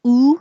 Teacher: like took and good could should book look cook so ooh your tongue is a little higher in the back and your lips are rounded